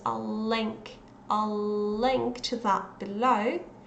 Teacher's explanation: this long L there, which starts in I'll and continues in link